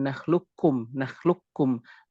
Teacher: Seperti kita ketahui yang dinamakan dengan idgham kamil, maka qafnya hilang secara zat dan sifat. Maka tidak menyisakan apapun.